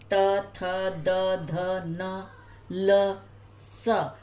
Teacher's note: अब आप जब ये वर्ण बोल रहे हैं तो आप बोल के देखेंगे तो आपकी जीभ जो है वो दांतों से टच कर रही है